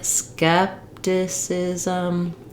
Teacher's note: you're going to stretch the first syllable and go quickly on the remaining syllables